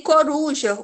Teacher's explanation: Em coruja, o mais forte é o ru